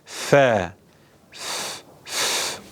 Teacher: üst dişimizin alt dudağımızın üstüne yerleştirerek okuduğumuz bir harf F F okurken Nefesin çıktığını hisseder ve duyarsınız f f f